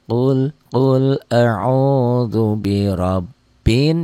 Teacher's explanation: Ada madnya panjangnya 1 alif sampai 1 alif setengah atau 2 sampai 3 harokat. Dan ada dengung ke hidungnya itu gunnah ya.